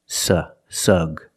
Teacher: the first syllable is the short uh sound like cup and up